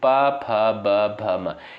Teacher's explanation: प, फ, ब, भ, म, इनका उच्चारण ओष्ठ से होता है।